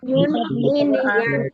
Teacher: জিহ্বার মাঝখান থেকে এই যে এখানে লেখা আছে ইয়া উচ্চারণ ইয়া জিহ্বার মাঝখান থেকে নরম ভাবে আদায় হবে ইয়া দুই পেশ ইউন ইয়া দুই জের ইন ইয়া দুই জবর ইয়ান ইয়া দুই পেশ ইউন, ইয়া দুই জের ইন, ইয়া দুই জবর ইয়ান, ইউন ইন ইয়ান।